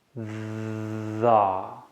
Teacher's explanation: when you say the you feel that your tongue goes against the bottom of your teeth